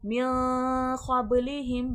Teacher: बा में खलखले की सिफ़ात वाज़ेह होगी क्योंकि हुर्फ़े खलखला है, बा आवाज़ पलट कर आएगी।